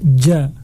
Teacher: Taib huruf jim ini dengan harokat fathahnya dibaca ja. Makhrajnya yang pertama atau makhrajnya yang perlu kita ketahui adalah tengah-tengah lidah dengan langit-langit. Jadi bagian tengah lidah dengan langit-langit.